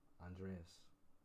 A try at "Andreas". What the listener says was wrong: That almost sounded like Andre.